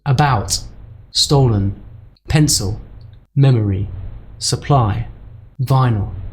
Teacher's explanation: first there's the schwa sound it's a kind of weak uh sound · Different vowels pronounced in exactly the same way, that lazy schwa sound.